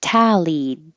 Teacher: make sure you're making an ah like ta even though the word looks like the word tall is in it